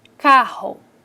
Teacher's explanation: os segmentos são caracterizados pelo movimento vibratório o exemplo é carro então o movimento das vibrantes é forte